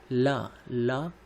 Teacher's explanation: तो ल को पार्श्विक इसलिए कहा जाता है क्योंकि ल के उच्चारण में हवा जो है वो जीभ के दोनों अगल बगल से निकलती है, ला, इसलिए ल को पार्श्विक व्यंजन कहा जाता है।